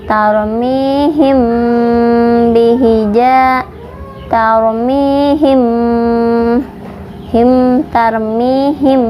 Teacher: mim sukunnya ditahan 2 harokat ya, disertai dengung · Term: ikhfa safawi